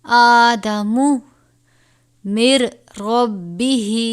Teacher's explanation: نون ساکن کے بعد را ہے، اس پہ غنہ نہیں کریں گے